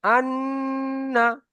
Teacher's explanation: তাসদিদ ওয়ালা অক্ষর দুবার উচ্চারণ হবে, একবার আগের অক্ষরের সাথে একবার একা একা · নুনের উপরে যখন তাসদিদ আসবে আর মিমের উপরে যখন তাসদিদ আসবে, একালি পরিমাণ গুণনা করে পড়তে হবে